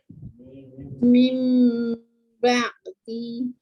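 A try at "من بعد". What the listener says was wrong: Hilangkan bunyi min tu tak nak. Tak nak bunyi en pun langsung. Masuk terus bunyi mim. Mim ba'di. Jangan bunyikan nun tu sebab kita dah tukar. Kalau kita tukar, macam kita tukar kerusi lah. Kerusi lama, tukar jadi kerusi baru. Dah tak ada dah kerusi lama. Sama juga kat sini. Kita tukar nun kepada mim, tiada bunyi nun.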